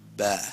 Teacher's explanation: It's not P with puff of the air out.